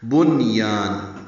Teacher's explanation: بنیان نون ساکن پڑھا جائے گا، یا الف مدہ ہے، دو حرکات لمبا کریں گے. آگے تنوین کے بعد میم آنے کی وجہ سے نم میں ادغام ہے، یہ ادغام ناقص ہے، غنہ ہوگا.